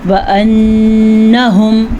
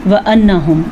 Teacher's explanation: نون کو ہم غنّے کے ساتھ پڑھیں گے کیونکہ نون کے اوپر شد ہے۔ جب نون کے اوپر شد آ جائے یا میم کے اوپر شد آ جائے تو وہ دونوں ہر صورت میں غنّے کے ساتھ پڑھا جائے گا۔ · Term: غنّہ